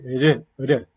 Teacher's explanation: Es apicoalveolar porque la punta de la lengua golpea rápidamente, solo una vez, los alvéolos, y hay vibración de cuerdas vocales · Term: vibrante simple